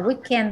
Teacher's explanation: the stress on the first syllable